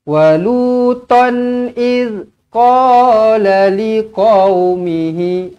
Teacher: Okey, tanwin selari bertemu dengan hamzah. Tanwin selari bertemu dengan hamzah izhar halqi, maka dibaca dengan jelas dan terang. Okey, tak boleh walutan tak boleh macam itulah, tak boleh dengung.